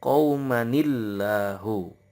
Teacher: nun wikoyah atau yang penyambung antara tanwin dengan huruf sukun atau tasdid